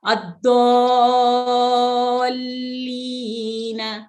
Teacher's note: پہلے اس کو ہم لمبا کریں گے اور اس کے بعد مشدد حرف پہ ہم اس کی آواز مضبوطی سے پکڑ کے روک کے پھر ہم پڑھتے ہیں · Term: مد لازم